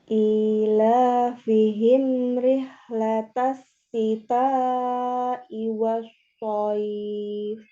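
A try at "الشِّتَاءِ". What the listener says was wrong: Shinnya juga ya, huruf shinnya disempurnakan ya. Sha, shi, shu. Jadi jangan di ujung lidah ya, ini tengah ya. Jangan sha, tapi sha, buka mulutnya dibuka. Sha ya, biar tipis. Sha, shi, shu. Ini masih di ujung ya, di ujung lidah. Jadi tengah lidah harusnya ya, seperti huruf ya, yi, yu. Jadi sama makronya di situ.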